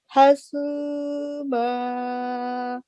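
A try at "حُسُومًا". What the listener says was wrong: حسو ہا پر دمہ ہے، پیش ہے. آپ نے فتح پڑھی ہے. اور یہ عام طور پہ جو بھی پیش سے لفظ شروع ہو رہے ہیں نا ان پہ بھی فی قلوب میں، وہاں یہاں پہ تھوڑی آواز آپ کی پیش واضح نہیں ہوئی.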